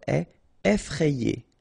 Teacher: remember, double F, so you open the E, so E, effrayé.